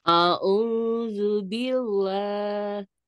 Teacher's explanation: Allah dibaca tarkik atau tipis, berbunyi lah Allah.